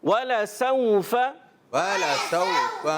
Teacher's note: سین سیٹی کے ساتھ حرف لین کو نرمی سے ادا کریں گے.